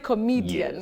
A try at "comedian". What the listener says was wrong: Oh, comedian. Comedian. Now you stress N. Comedian.